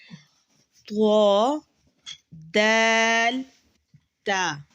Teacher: زبان کی نوک جب ثنایا علیہ کی جڑ سے لگے تو یہ حروف ادا ہوتے ہیں